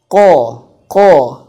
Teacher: Qaf itu makhrajnya yaitu tempatnya yaitu di pangkal lidah. Pangkal lidah menyentuh langit-langit. Ko. Maka dia harus tapi tebelin. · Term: qof